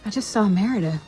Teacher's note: It's common to drop the T between two consonants.